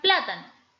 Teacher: De ellas, no es última sílaba, penúltima sílaba, ta, y antepenúltima, pla. ¿Dónde cargo yo la mayor fuerza de voz? En pla.